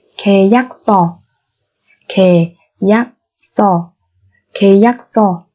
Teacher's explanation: Ở đây chúng ta có hai biến âm. Thứ nhất là nguyên âm y, ở đây đọc thành e bởi vì phía trước của nó là phụ âm ki yok. Thứ hai là phụ âm siot ở đây sẽ biến thành phụ âm căng, đọc là so.